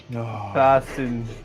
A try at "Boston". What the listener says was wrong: No, nobody in Boston says Baston. That's not the accent.